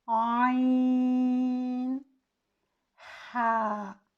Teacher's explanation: اسے سیر حاصل طور پر لمبا کر کے پڑھا جاتا ہے، جیسے کہ عین، ہا۔ ہا کو ہم صرف 2 حرکات جتنا لمبا کریں گے، لیکن عین اس کو ہم سیر حاصل طور پر لمبا کریں گے۔